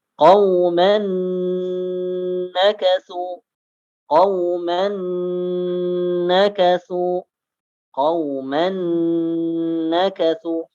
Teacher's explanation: Berikutnya qauman nakasu, qauman nakasu, qauman nakasu, ya, dimasukkan ke huruf nun dan ditahan 2 harakat. Ya, tanwin fathah masuk ke huruf nun dan ditahan selama 2 harakat.